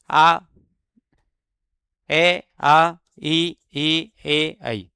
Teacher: इनका उच्चारण करते समय होंठ गोल नहीं होते हैं। जैसे अ को आप बोल दो आपका होठ जो है वह बिल्कुल गोल नहीं होगा। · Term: अवृत्तामुखी